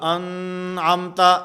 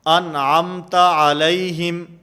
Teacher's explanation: جیسے سورۃ الفاتحہ کے اندر ہے صراط الذین انعمت، انعم نون ساکن، اور نون ساکن کے بعد حروف حلقی میں سے عین موجود ہے، اس لیے یہاں پر غنہ نہیں ہوگا، انعمت ایسے نہیں ہوگا، نون کو بالکل ظاہر کر کے پڑھیں گے